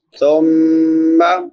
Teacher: ثم سا نرم حروف میں سے ہے، میم مشدد پہ غنہ ہوتا ہے، غنہ آواز کو ناک میں چھپا کر ادا کرنا ایک الف کی مقدار کے برابر